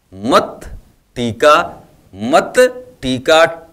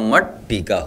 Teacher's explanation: त जो है वह ट में बदल गया तो यहां मट टीका हो गया अब यहां देखिए रामस धन